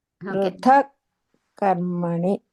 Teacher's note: ధ లేదమ్మా అక్కడ పృథ త మహాప్రాణము త కర్మణి అదే పృథ కర్మణి అదే సూపర్ అందర ఇలాగే చదవండి చిన్నగా